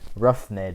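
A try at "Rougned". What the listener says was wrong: Runed. There's no H. Runed. Runed.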